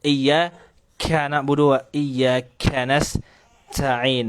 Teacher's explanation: kesalahan pada huruf Kaf adalah terlalu mengeluarkan aliran nafas berlebihan